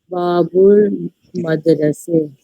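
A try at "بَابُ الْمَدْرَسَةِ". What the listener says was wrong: जेर जेर जेर, पूरा जेर जबर सब पढ़िए। मदरसते, ये इंपॉर्टेंट है, समझ में, लास्ट में जेर जबर लगाना अरबी में इंपॉर्टेंट।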